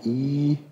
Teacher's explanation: dann wenn ich sie ganz hoch mache die züe U und wenn ich sie weiter vorne hoch mache und die Lippen breit lasse haben wir das i